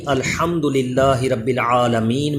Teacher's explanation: با میں کلکلا کر کے پڑھا کریں، را کو پر پڑھا کریں